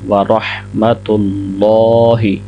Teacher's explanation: آگے ورحمۃ اللہ، را کو ہا کے ساتھ ملائیں گے، ہا کی آواز بھی صحیح طریقے سے ادا کریں گے۔ آگے اللہ کا لام موٹا ہوگا